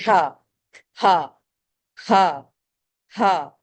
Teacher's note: इस हा में कोई हवा का शोर नहीं है। इस हवा को पढ़ते हुए कोई एनर्जी नहीं लगानी। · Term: नॉर्मल हा